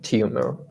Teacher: There's a yeah sound in between.